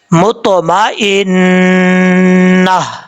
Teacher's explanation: اور جب یہاں پہ وقف کریں گے, تجوید کا قانون یہ ہے کہ جس لفظ پہ آپ وقف کر رہے ہیں اس لفظ کے آخر میں اگر گول تا ہو تو وقف کرتے ہوئے گول تا کو ہا سے بدل دیں گے. یعنی اگر آپ ملا کے پڑھ رہے ہیں تو مطمئنۃ تا پڑھا جائے گا, اور اگر یہاں ملا کے نہیں پڑھ رہے, وقف کر رہے ہیں, تو پھر اس صورت میں تا کو ہا سے بدل دیں گے.